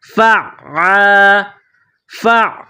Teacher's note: عین کے اوپر تشدید ہے تو فا کو عین کے ساتھ ملائیں گے تشدید کی وجہ سے، عین کو دبا کر پڑھیں گے · گلے کے درمیان سے عین کو پڑھیں گے، عین کو نکالیں گے، عین کے اوپر تشدید ہے